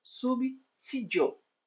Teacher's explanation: A letra S após a consoante B não se pronuncia como Z de cinza, mas como S de pensar.